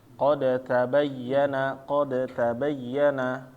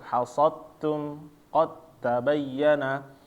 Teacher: Ketika dalnya sukun bertemu dengan huruf ta hidup, maka dia langsung masuk.